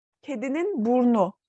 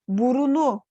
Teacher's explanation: kedinin Burunu demek yerine kedinin burnu diyoruz buradaki burundaki u düşmeye uğramış oluyor